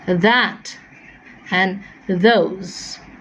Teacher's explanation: for the, it is a voiced dental fricative